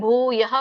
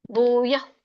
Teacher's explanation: ವಿಸರ್ಗ ಮಧ್ಯದಲ್ಲಿ ಇದ್ದಾಗ ವಿಸರ್ಗ ಉಚ್ಚಾರಣೆ ಬರೋದಿಲ್ಲ